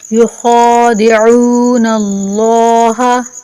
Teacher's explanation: خا کو موٹا پڑھیں گے اور لفظ اللہ کو بھی